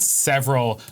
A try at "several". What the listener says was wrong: Can we put more emphasis on the word several? Several.